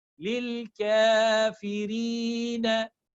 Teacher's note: I'm stretching ka, not fa.